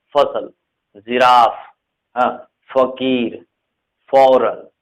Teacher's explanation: फ हल्का हवा ज्यादा निकलता है